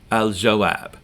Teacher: we do hear the lam in alif lam because jim is pronounced near the back of your mouth